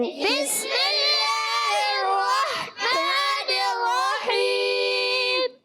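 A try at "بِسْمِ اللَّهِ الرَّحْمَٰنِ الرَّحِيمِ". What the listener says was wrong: کافی بہتر ہے، مگر اور آپ نے درست کرنا ہے. یعنی آخر کا جو ہا ہے نا وہ بھی کلیئر. یہ والا ہا تو تقریباً کلیئر ہو رہا ہے، مگر یہ ہا تھوڑا سا ہا کی طرف جاتا ہے.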